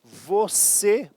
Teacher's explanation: Sim, se eu falo a palavra você, por exemplo, é uma oxítona, a última sílaba é a mais forte